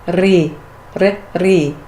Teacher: Some books say the R is not rolled, but I find when my mouth is relaxed and I go to that sound, there's a natural fluttering of the tongue that happens